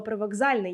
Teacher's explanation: знаходимось на слово Привокзальний яке точно підходить під вивченні нами правила ми бачимо спочатку глухий к в цьому слові а далі дзвінкий з